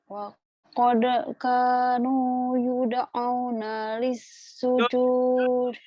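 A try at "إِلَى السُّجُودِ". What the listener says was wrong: ilas. Bukan lis. Yud'auna ilas sujudi.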